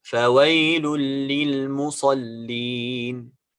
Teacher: We have to say فويل للمصلين without غنة. Only merge the sound of the nun of tanween in a lam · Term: إدغام بغير غنة